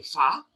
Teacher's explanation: it's a elongated a like in Father F A like the long a fa that's the long a